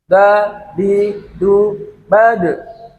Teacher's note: huruf Dal itu pada akhir kalimat di sukun itu harus ada pantulannya suaranya harus mantul karena Dal juga salah satunya huruf Qalqalah yang harus ada suara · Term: suara mantul